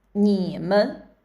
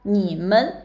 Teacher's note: 你 is a third tone, and 们 there's no tone. It's light tone or the zero tone